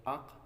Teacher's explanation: یہ قاف زبان کی جڑ اور تالو کے نرم حصے سے ادا ہوتی ہے